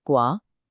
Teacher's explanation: Gua, second tone. This one rises, like you're asking a question.